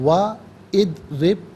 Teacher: و ادرب، واو پر زبر ہے، اسے ادرب کی دوت ساکن کے ساتھ ملائیں گے، درمیان میں سے الف نی حمزہ کو حذف کیا جائے گا، اور ناظرین را کے نیچے زیر ہے، را کو باریک کر کے پڑھیں گے